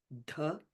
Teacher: Notice the D and H, as we've talked about in all the other Veda mantras. It's an aspirated sound. So it's dha as opposed to just da.